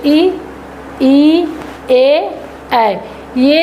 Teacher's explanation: इ ए जो है ये जीभ के आगे वाले हिस्से से उच्चारित होते हैं। यानी कि इन स्वरों को बोलते समय हमारे जीभ के आगे वाले हिस्सों पे दाब पड़ता है। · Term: अग्र स्वर